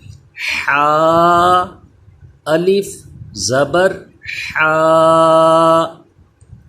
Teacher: حا کا مخرج یہ بھی اہم ہوتا ہے، اسے کہاں سے ادا کرتے ہیں؟ حلق کے درمیان والے حصے سے، یعنی اس حا میں سانس کی آواز کچھ مکس ہونی چاہیے، جیسے ہم سانس لیتے ہیں تو یہ آواز اس میں آنی چاہیے۔